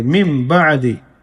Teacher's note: کیونکہ نون ساکن کے بعد یہاں پر با ہے، تو نون ساکن کو میم سے بدل کر کے پڑھیں گے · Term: اقلاب